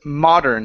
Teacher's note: you're adding an extra vowel in between the r and the N